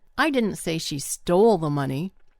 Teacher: if I put the emphasis on the word stole, that means that maybe she borrowed it.